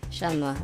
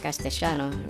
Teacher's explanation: Argentinian Spanish has a noticeable sh sound in the place of double L and Y sounds.